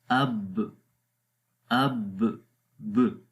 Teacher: شدت آ گئی، جہر بھی آ گئی، مطلب شدت کے اندر دباؤ محسوس ہوا، اور جب آواز کو ریلیز کریں گے تو قلقلہ کی آواز آ جاتی ہے